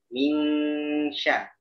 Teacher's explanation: Jadi kamu baca ikhfa-nya masih kurang tepat ya. Karena dia ketemu shin yang ada di tengah, maka ikhfa-nya juga berada di tengah.